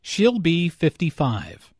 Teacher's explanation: Notice that 55 is stressed here.